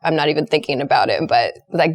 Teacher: dropping your voice into a lower register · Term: vocal fry